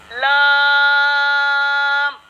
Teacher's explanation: इसका मखरज होगा ज़बान का किनारा और दांतों की जड़ के ऊपर तालु की जानिब वाले हिस्से से ये हर्फ लाम अदा होता है